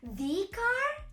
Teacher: In this dialogue, uses the long E sound when pronouncing the before the word car, to emphasize that she's specifically referring to the car her friend just mentioned.